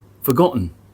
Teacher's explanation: the glottal stop doesn't appear since the speaker omitted the t sound. This situation can happen in casual or daily conversation since speakers tend to speak fast without stopping between words.